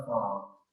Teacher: فا، اس کا مخرج ہے نیچے کے ہونٹ کا اندر والا حصہ اور سلایا غلیہ کا کنارہ. نیچے کے ہونٹ کا اندر والا جو تر حصہ جسے کہتے ہیں وہ، اور اوپر کے جو دو دانت ہیں اس کا کنارہ ٹچ ہوگا تو یہاں سے نکلے گا فا